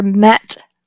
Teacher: The tongue body is located midway between the mid and low positions. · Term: epsilon